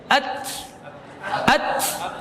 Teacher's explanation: Punggung ujungnya lidah ya, punggungnya. Nah, dengan pangkal gigi seri atas.